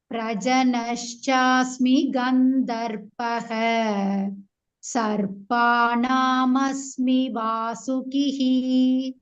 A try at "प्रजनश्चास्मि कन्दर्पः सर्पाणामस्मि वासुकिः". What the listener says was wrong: Khandarpah. Not Gandharpah. Khandarpah.